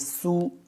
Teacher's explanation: حا پیش حو، شین زیر شی، حوشی، حوشی، حوشی، را تا زبر رت، حوشیرت، حوشیرت، وقف کی صورت میں ہو جائے گا حوشیرت۔ سین پیش سو، سیٹی کی آواز آنی چاہیے، سین پیش سو، طا زیر طی، طا موٹا، طا زیر طی، سوطی، تا نہیں سوتی نہیں پڑھیں گے، تا میں فرق ہوگا، ٹھیک ہے۔